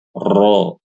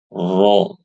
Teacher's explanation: yang pertama dibaca ro dijelaskan takrirnya dan yang kedua yang Insyaallah lebih fasih bacanya dengan menyembunyikan takrir